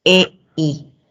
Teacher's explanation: Este es un diptongo descendente, ¿no? De vocal abierta a vocal cerrada.